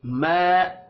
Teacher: इल्ला बिइज़्निह, इल्ला बिइज़्निह मन ज़ल्लज़ी यशफ़अु इंदहू इल्ला बिइज़्निह यअलमु मा, हरकत खींच कर नहीं पढ़ी जाएंगी। मा अलिफ से पहले जबर आ रही है, अलिफ मद्दा होगा और अलिफ मद्दा को एक सेकंड खींच कर पढ़ना है।